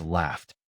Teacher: gh represents an f sound at the end of laugh. Because f has no vibration, laughed ends with t.